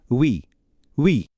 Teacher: ইউ উমলাউটের জন্য ঠোঁট শুরু করে উ বলার ভঙ্গিতে ই বলতে হবে। উই উই।